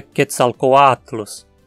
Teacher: No nome do deus Quetzalcoatl, tanto o O quanto o A são vogais longas. O A sozinho aqui forma a penúltima sílaba, e como ele é longo, ele precisa receber o acento. A pronúncia então é Quetzalcoatlus.